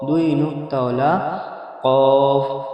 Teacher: জিভের গোড়া এবং তার বরাবর উপরের তালুর সাথে লাগিয়ে উচ্চারিত হয় দুই নোক্তাওয়ালা কফ।